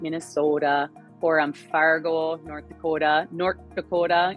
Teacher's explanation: in this region we tend to spread our vowels this way and they get really really rounded